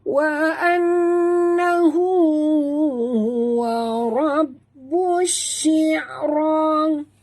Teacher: Nun bertasydid wajib dengung 2 harakat. Hu di sini mat silah qasirah, ada waw kecil di hujung ha dhamir ini ya, 2 harakat.